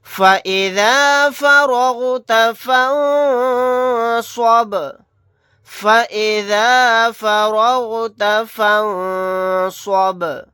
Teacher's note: یہاں پر دیکھیں نون ساکن کے بعد صاد آ گیا، یہاں پر اخفا کا قاعدہ ہوگا، با ساکن ہے، یہاں پر قلقلہ کر کے پڑھیں گے۔